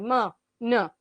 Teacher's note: મુખપથ અને નાસિકાપથ બંનેમાંથી હવા પસાર થાય